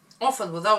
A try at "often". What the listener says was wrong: No T. Don't pronounce T.